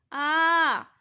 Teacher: उच्चारित करके देखिए मुंह कितना बड़ा खुलता है, बोलिए आ। आप देख सकते हैं कि हमारा मुंह बहुत बड़ा खुलता है यानी डब्बे जैसा गोल खुलता है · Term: विपरीत स्वर